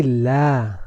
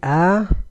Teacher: that remains after the origin that is characterized by three things sound continues to run from the vocal cords the mouth remains open and the tongue remains in a state of rest